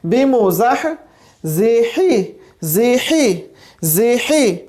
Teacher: اب یہ بھی ہمارے پاس وسط حلق سے آ رہا ہے، اس کا جو مخرج ہے ہمارے پاس ہا کا، یہ ہمارے پاس وسط حلق سے ہے